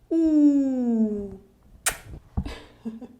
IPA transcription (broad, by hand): u